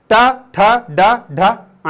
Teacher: मूर्धन्य। तो जब भी तुम ट, ठ, ड, ढ, ण बोलोगे तो तुम्हारे ऊपर वाले जो दांत हैं उसके थोड़ी सी ऊपर तुम्हारी जुबान टकराएगी